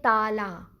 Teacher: اب جب آگے بیچ میں ایک الف آ گیا تے کے بعد تو ہم اسے پڑھیں گے تالا. ہم نے اسے کھینچ لیا، ہم نے اسے 2 حرکت پڑھا